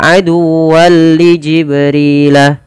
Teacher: tanwinnya masuk kepada huruf lam dan kita baca dengan bacaan Idgham bila ghunah